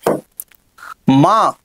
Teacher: మ అనేది ఓష్ట్యానునాసికము ఓష్ట్యాను నాసికము